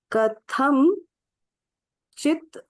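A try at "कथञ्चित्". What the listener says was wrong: कथनचित एक ही शब्द है।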